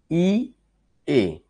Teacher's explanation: ই এ অর্থাৎ একটু উপরে ছিল ই উচ্চারণ করার সময় তারপর এ করার সময় একটু নিচে নেমে আসলো